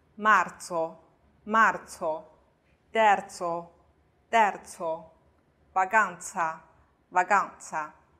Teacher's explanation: 在辅音后面的话，这个▁za▁发轻音